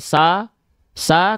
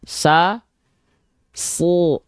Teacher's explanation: Jadi bunyi tebal itu diakibatkan karena pangkal lidah naik.